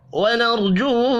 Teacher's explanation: را ساکن سے پچھلے حرف کے اوپر زبر ہے، را کو پر پڑھیں گے. جو واو مدہ ہے، ایک الف کے برابر کھینچ کر پڑھنا ہے.